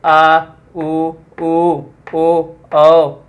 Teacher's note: जो जीभ का प्रयोग होगा वो किधर से होगा, पीछे से होगा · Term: पश्च स्वर